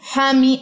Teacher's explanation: اچھا, یہاں پہ حمزہ کے بعد تائے مربوطہ, اس پہ جھٹکا نہیں دینا, حمی ہا پڑھی جائے گی, ہائے ساکنہ, جیسے ہم نے پڑھا نا نفقہ بارہ, اسی طریقے سے حمی.